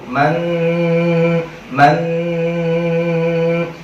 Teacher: Caranya adalah dengan memasukkan nun matinya itu man, itu harus kita masukin ke pangkal hidung. Man. Ujung lidah harus ada di langit-langitnya mulut. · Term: dengung